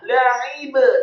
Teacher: Inna fi dzalika la'ibratan, lamnya dibaca tipis fathah satu harokat, kemudian ainnya ditekankan keluar dari tenggorokan, kasroh satu harokat, kemudian ba-nya la'ib, ba-nya dibaca sukun, dan ba yang sukun wajib untuk diqalqalahkan atau dipantulkan